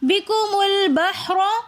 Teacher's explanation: بحر میں را کے اوپر زبر ہے، تو اس لیے را کو ہم بغیر کھینچے، بغیر جھٹکا دیے را کو موٹا کر کے پڑھیں گے، کیونکہ را کے اوپر زبر ہے۔